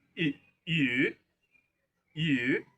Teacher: We read it using the second tone which is the rising tone.